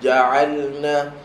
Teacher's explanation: huruf jim tengah-tengah lidah tolak ke langit-langit atas. Tengah lidah, bukan depan, bukan belakang. Tengah-tengah lidah tolak ke langit atas.